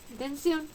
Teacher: el mayor golpe de voz se encuentra en la última sílaba. Esta sílaba termina en consonante N, por tanto lleva tilde. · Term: palabra aguda